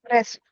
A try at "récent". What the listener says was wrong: It's not ré, it's récent. Récent. Récent. Récent.